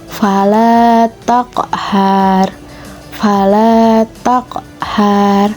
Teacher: huruf qaf juga harus dibaca dengan ada sedikit pantulan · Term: qalqalah sugro